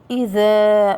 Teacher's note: والذال من الحروف اللثوية التي تخرج من طرف اللسان مع أطراف الثانية العليا